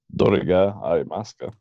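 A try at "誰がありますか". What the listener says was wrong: Close. It's not dore. Dore is actually a very different word. Dare.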